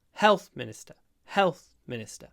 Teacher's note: the stress is on the health health Minister Health Minister because it's a compound noun the second word becomes unstressed